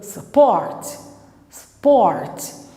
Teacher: O U, aqui no support, é um U, mas o som é um som de schwa. Você não fala support, você fala support, support.